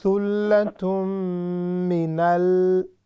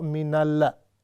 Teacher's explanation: We don't bounce lam. Thullatum minal, not minalla.